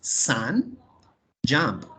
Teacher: Aquí no decimos sun ni jump, decimos sun, jump. Es una especie de A, cortica. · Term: sonido corto